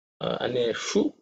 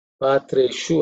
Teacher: the shu is again cerebral sha